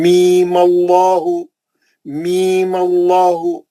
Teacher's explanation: پہلے لام پڑھیں گے, میم کا غنہ کریں گے, پھر مد اصلی پڑھیں گے, پھر میم کے زبر سے آگے اللہ کو ملا دیں